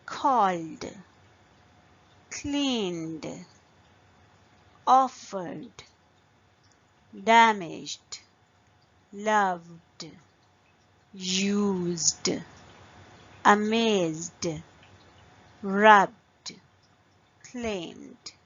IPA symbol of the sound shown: d